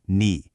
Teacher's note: The initial ni plus the final e with that dipping third tone makes ni.